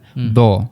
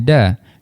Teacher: Huruf dot ni merupakan huruf isti'la dan dia berbaris atas, kita baca dengan bacaan tebal lah.